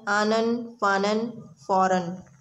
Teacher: ایسے حروف کو یوں پڑھا جاتا ہے جیسے ہم اس حرف کی حرکت کے ساتھ نون ساکن ملا رہے ہوں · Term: تنوین